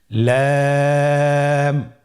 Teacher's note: লাম হরফটি উচ্চারণের ক্ষেত্রে অবশ্যই বারিক হবে এবং 3 আলিফ টেনে পড়তে হবে।